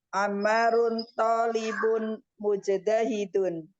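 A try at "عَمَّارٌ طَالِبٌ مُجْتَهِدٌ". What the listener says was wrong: Sah.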